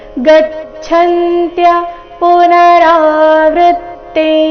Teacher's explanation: ಅನುಸ್ವಾರದ ಉಚ್ಚಾರಣೆ ಚ ವರ್ಗದ ಅನುನಾಸಿಕ ಯ ರೀತಿ ಬರ್ತಾ ಇದೆ.